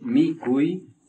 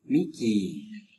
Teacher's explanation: uy se transforma en i prolongado